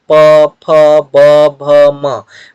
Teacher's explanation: अब प वर्ग के जो वर्ण है इनका उच्चारण ओष्ठ से होता है, इसीलिए हम यहाँ पे ओष्ठ लिखे हैं।